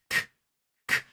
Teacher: There are no vibrations. It is an unvoiced or voiceless sound.